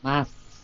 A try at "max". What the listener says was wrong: No, chẳng cái hơi lại, đừng có mass. Max. Mát cái chữ mát á, tiếng Việt của mình nó mát mẻ. Nào, thấy cái mát không? Cái chẳng cái hơi lại nha. Mát, cái xong cái cổ họng mình nó bị chận rồi, phải không? Mát, phải không? Đó, cái xong mày xì nó, cái mạnh, cái âm xì nó phải xì nha.